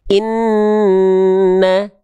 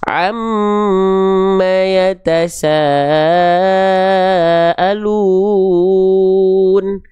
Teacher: Jadi ketika huruf-huruf yang bertasydid, ketika bertasydid ya cukup ditekan, kecuali huruf nun dan huruf mim harus ditahan karena dia ada hukum gunnah. Ada yang bilang gunnah musyaddadah, ada yang bilang wajibul gunnah, gunnah asliyah ya.